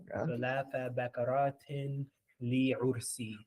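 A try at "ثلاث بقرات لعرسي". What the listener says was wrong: It's not li ursi, it's li ursi. Not li ursi. There's no elongation on it. It's one word.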